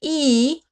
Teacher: A vowel like e is high and fronted. Your tongue is high in your mouth, closer to the teeth.